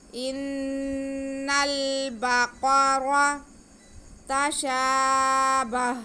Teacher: हम क़ाफ को मोटा करके पढ़ेंगे क्योंकि ये हुरूफ़ मुस्तालिया है। اور را کو بھی موٹا کر کے پڑھیں گے کیونکہ را پہ زبر ہے.